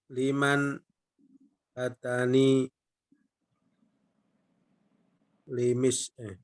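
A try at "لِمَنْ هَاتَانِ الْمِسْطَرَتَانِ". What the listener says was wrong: Itu al Pak, ya, bukan li. Jadi makanya bacanya disambung saja Pak ya, ya. Hatanil, nah gitu.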